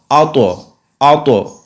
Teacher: इसमें कलक भी हो रहा है और इसको मुफ भी पढ़ना है यानी मोटा भी पढ़ना है